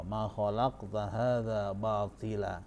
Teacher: Ingat, di situ ada huruf qaf disukun di tengah. Makanya dibaca qalqalah sughra